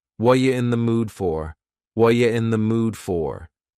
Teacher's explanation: The word are is gone, and the word you has been reduced to ya. So when we link together, what and you, super fast.